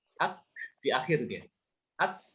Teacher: Kaf dengan ta juga dia ada keluar nafasnya ya, tapi dia keluarnya setelah tertahan suara ya. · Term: hames